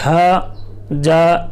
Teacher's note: जा झ जा ऐसा नहीं पढ़ना है। जा यानी मक्खी की भिनभिनाहट की जैसी आवाज आएगी।